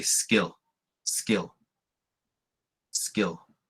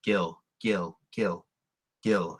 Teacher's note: That's an unaspirated K that you're saying when you say skill.